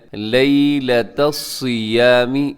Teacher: صاد کو موٹا رکھیے گا، صاد اپنی باریک نہیں ہونے دینا